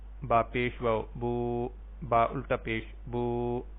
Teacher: واو ساکن اس سے پہلے پیش، اس کو واو مدہ کہیں گے اور اس کو ایک الف کے برابر لمبا کریں گے اور اس کی جگہ پہ الٹا پیش استعمال ہو جائے گی.